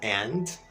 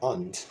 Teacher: ele pode ser uma vogal intermediária, and, mais aberta, entre o A e o E, ou então ele pode ser um som neutro